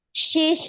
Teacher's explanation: Huruf shin bertasdid itu dialirkan. Shi, jangan diputus ya.